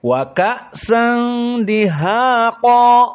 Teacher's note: Namun di sini qa dalam keadaan tafkhim. Maka semua huruf di sini dalam keadaan muraqqaqah kecuali qa